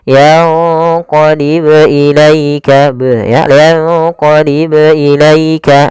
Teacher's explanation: Jangan dibaca yanqalib, yanqalib ilaikal basar, tapi harus ada pantulannya dan tidak boleh ada hamzah. Yanqalib, nah itu tambahan hamzah, tapi dia yanqalib ilaika, ya, yanqalib ilaika langsung saja. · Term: qalqalah